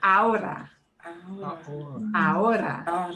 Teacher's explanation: You go straight from the A to the O.